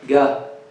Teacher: people in Yemen and some other Arab countries, some other places in the Arab world, they pronounce the Qaf as ga.